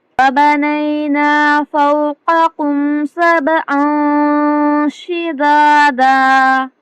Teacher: اخفا ہوگا اور با پر قلقلہ ہوگا